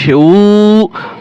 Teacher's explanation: নরম করে উচ্চারণ করবেন, যদি শক্ত করেন তাহলে কিন্তু হামজা হয়ে যাবে